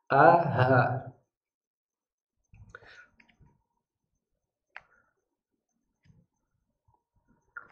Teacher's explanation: Hamzah dan h. Tidak sampai ke dada, tidak ada yang makhraj dada, hanya tenggorokan bagian bawah.